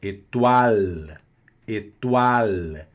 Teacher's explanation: Olha a pronúncia também aqui do final, aqui esse L. Nunca um L no final da palavra vai soar como U.